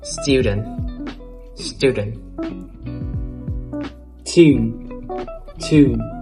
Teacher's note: in some words, you in British English becomes oo in American English. Just some words, not all of them, okay?